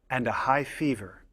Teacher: high fever rising intonation shows that the list is not finished we use falling intonation on the last item to show that the list is complete